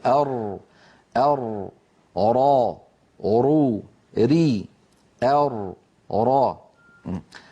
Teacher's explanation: مخرج الراء من طرف اللسان مع ما يحاذيه من اللثة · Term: حرف الراء